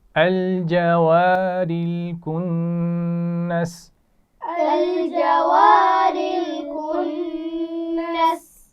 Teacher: کنس نون پر غنہ کیا جائے گا